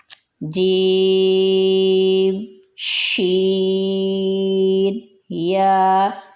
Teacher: مخرج نمبر 4 جیم شین یا، زبان کا درمیان جب اوپر تالو کو لگے، اس سے جیم شین یا ادا ہوتے ہیں